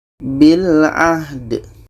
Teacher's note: da ini kalau mati adalah qalqalah, ada pantulan.